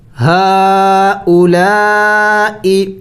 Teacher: فقال انبئونی باسمائی. ہا کڑی زبر ہا کڑی زبر بھی ہے اور چھوٹا مد بھی ہے تو اس کو تھوڑا سا زیادہ لمبا کرنا ہوتا ہے